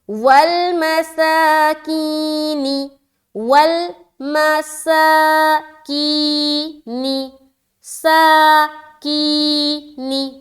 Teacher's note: ول میں بالکل جلد کریں گے، سا میں کھینچ رہے اور کی میں کھینچ رہے